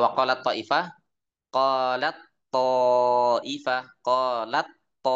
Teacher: Ta dan th itu makhrajnya sama yaitu dari ujung lidah bertemu pangkal gigi atas. Hukumnya menurut hafz adalah idgham secara umum. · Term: mutajanisain